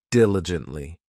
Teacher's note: This adverb has four syllables and the stress is on that first syllable,